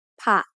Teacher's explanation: The first syllable ผ ะ is a low tone because it has a high class initial consonant with a short vowel to make a dead ending